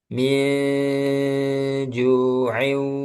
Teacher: min ditahan dulu min juin. Nah, ini ditahan ikhfa hakiki